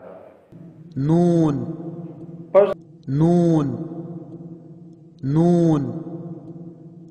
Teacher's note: سرہ زبان تالو سے مل کر نون ادا ہوتا ہے